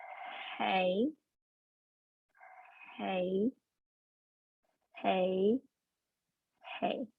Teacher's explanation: just that nice easy voiceless sound where we hear the airflow passing through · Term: h sound, H sound